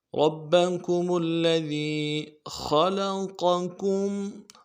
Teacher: خا کو موٹا کرنا ہے، لام کو نرم سے ادا کرنا ہے · کمل، میم کو کمل میں میم کو آگے لام کے ساتھ ملانا ہے، تشدید ہے۔ لذی وی میں یا مدہ ہے، دال کو باریک کرنا ہے، ایک الف دال میں کھینچنا ہے یا مدہ کو۔